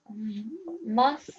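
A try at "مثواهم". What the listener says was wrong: So try to make it different to the letter seen. So mathwahu.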